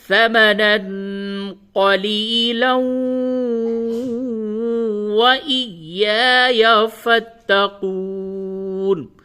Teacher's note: تنوین کے بعد واو آ گیا تو یہاں پہ ادغام مع الغنہ ہوگا. تو واو پہ تشدید نہیں ہے، لیکن ادغام جب کریں گے تو لام کو واو سے ملا کر کے اور غنے کے ساتھ پڑھیں گے.